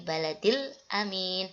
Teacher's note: Ini juga dibaca alnya al-qamariyah, dibaca jelas alnya. Terus aminnya ini dibaca panjang 2 harokat